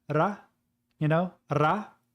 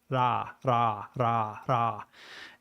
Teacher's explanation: you don't actually roll your tongue you just tap your tongue against the roof of your mouth like once